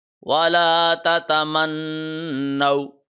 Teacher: نون کے اوپر غنہ کریں گے کیونکہ نون پہ تشدید آ رہی ہے. یہاں پہ غنہ ایسے کریں گے کہ زبان منہ کی چھت کے ساتھ 1 سیکنڈ تک ٹچ کیے رکھے گی.